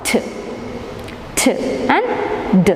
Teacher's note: using the tip of the tongue against the alveola and then release it and we produce the sound t t and D it's voiced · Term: alveola sounds